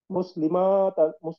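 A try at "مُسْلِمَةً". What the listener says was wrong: না, টান হবে না, হ্যাঁ বলেন। টান হবে না, মুসলিমাতান।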